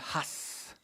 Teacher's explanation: une interjection qui se prononce en hébreu has, avec un H aspiré